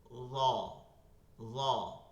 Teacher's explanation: জিহ্বাটা একটু গোল হয়ে যাইতেছে নিচ থেকে, এর জন্য এটা মোটা হয়ে যাচ্ছে, কিন্তু নরম কিন্তু থাকতেছে, কারণ জিহ্বারও আগা দাঁতেরও আগা এই দুইটা ঠিক থাকতেছে।